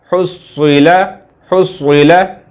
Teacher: स्वाद को मोटा करेंगे और स्वाद के ऊपर तशदीद है, तो पहला स्वाद साकिन है, दूसरे स्वाद पे ज़ेर, हुस्विला। और ये हा जो है ये हलवे वाला हलक से निकलेगा।